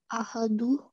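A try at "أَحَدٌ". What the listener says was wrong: Ahadun, because there are two. Do you see there's one dhamma there and another dhamma on top? So if you have your tanveen, yes, it's going to be ahadun.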